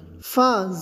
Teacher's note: فا میں پھسپھساہٹ کی آواز کے ساتھ منہ کھول کر پڑھیں گے